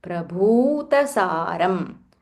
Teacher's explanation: The bha mahaprana and it is dirgha. So you have to say bhu.